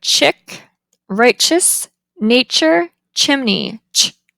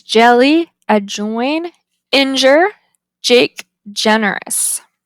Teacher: The first one is a voiceless palatal affricative, and the second one is voiced.